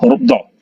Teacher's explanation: Do ini berarti di tepi lidah, ya. Boleh sebelah kiri, boleh sebelah kanan. Jadi do, ya, do, ya, tepi lidah kanan atau kiri, ya, serta menepati kerahang, ya, do, cara nyebutnya, ya, do, ya, jangan do.